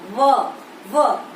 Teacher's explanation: व दंत ओष्ठ, दांत और होठ, तो इसे कहा जाएगा दंतोष्ठ्य वर्ण